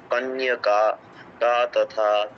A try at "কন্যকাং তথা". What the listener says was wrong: কন্যাকান তথা অনুসারের উচ্চারণটা করতে হবে।